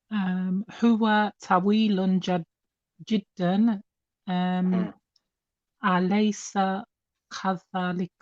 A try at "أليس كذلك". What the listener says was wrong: Yeah, the kaf again sounded a bit off for some reason. أليس كذلك?